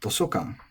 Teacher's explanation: Toshokan, which is another nakadaka noun